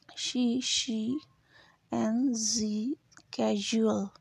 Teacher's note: Then we have she and casual, these are the post alveolar.